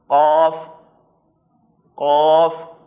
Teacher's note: اب جب آپ قاف کو ادا کریں گے تو آپ خود محسوس کریں گے کہ زبان جو ہے وہ بالکل اندر والے حصے سے اوپر کی طرف کہیں ٹکرا رہی ہے۔ قاف، قاف، اور اس کو موٹا کر کے پڑھنا ہے، چونکہ دو کاف ابھی میں نے آپ کے سامنے عرض کیا، ہمارے پاس ایک ڈنڈی والا کاف ہے، ایک گول دو نقطے والا کاف ہے۔